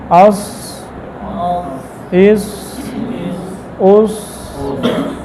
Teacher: صاد کا مخرج یہ زبان کی نوک اور ثنائے سفلا، پھر کچھ اتصال ثنائے اولیاء کا · صاد کے اندر صفات حمز ہے، رخوت ہے، اور اسی طرح استعلاء ہے، اطباق ہے